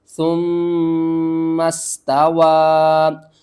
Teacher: چھوٹی مد ہے، 3 الف کے برابر اوپر کی طرف کھینچ کر پڑھیں گے